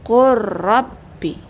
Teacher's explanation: Cuba lihat, suara lam dimasukkan ke ra, kalah dia. Suara lam kalah dengan ra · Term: idgham mutaqaribain